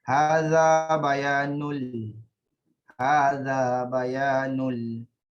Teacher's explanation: tanwin bertemu lam tanpa dengung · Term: idgham bila gunnah